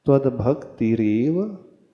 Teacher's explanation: दूसरे चरण में इतना होते हुए भी त्वद्भक्ति ही एव, भक्ति रेव लिखा है ना, भक्ति के बाद वहां पर विसर्ग था और एव था, तो विसर्ग के बाद ए आने से विसर्ग का र हो जाता है, रेफ हो जाता है